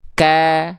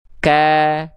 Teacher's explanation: Kalau huruf kaf itu perhatikan ya nih dia memang makhrajnya pangkal lidah juga tuh ya pangkal lidah juga teman-teman tuh. Tapi ketika vokal A keluar pangkal lidahnya turun sehingga keluarnya vokal A jadi jadinya tipis ka tuh ya.